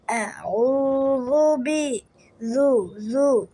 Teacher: জাল জিহ্বার আগা এবং দাঁতের আগা থেকে উচ্চারিত হবে।